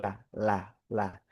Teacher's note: Huruf lam itu dia ee ujung lidah nempel ke langit-langit yang berbatasan dengan gigi seri. Dagingnya langit-langit batasnya ya dengan ee gigi seri belakang gitu.